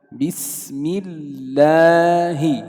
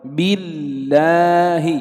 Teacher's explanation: Ya dibaca tipis lafaz Allah itu huruf lamnya dibaca tipis jika dia terletak setelah kasro.